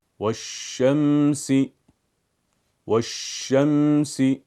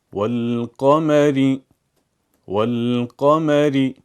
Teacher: پہلے لفظ والشمس ہم نے لام کو نہیں پڑھا اور دوسرے لفظ والقمر ہم نے لام کو پڑھا۔ والشمس کے اندر لام نہ پڑھے جانے والا ہے کیونکہ اس کے بعد شمسی حرف آیا ہے۔